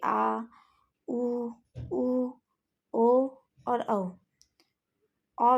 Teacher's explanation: ये सभी पश्च स्वर कहलाते हैं। यह जीभ के पिछले भाग में रहते हैं। ये उच्चारण करते समय इसका स्थान जीभ के पिछले भाग में ही रह जाता है।